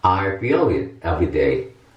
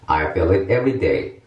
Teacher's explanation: 장모음 이는 한번 단지 길다를 넘어서 한번 소리가 꺾인다? 그런 느낌이 있고, 그 다음에 단모음 이는 그냥 짧다 그런 걸 넘어서, 우리말 이와 에 사이에 발음을 내게 돼 있습니다. 그래서 약간 흐리멍덩한 소리가 나게 됩니다.